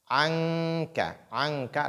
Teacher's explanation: Anka, là c'est l'ikhfa. Il faut donc dissimuler la lettre nun ici, parce que kaf est venu.